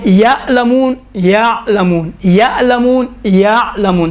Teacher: ہو گیا حمزے اور آئین میں، بس حمزے میں جھٹکا ہے اور سختی ہے، نرمی ہے آئین اور نرمی ہے اور بدون جھٹکا آئین میں